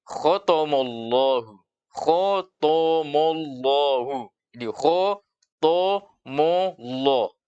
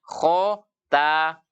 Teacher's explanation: ketika dia membaca khotomollahu berarti kho sudah benar, tapi taknya menjadi to. Berubah makhrajnya.